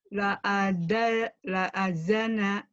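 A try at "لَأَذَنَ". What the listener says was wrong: Zal, agak rapuh dikit. La azana, la azza, za. La azana.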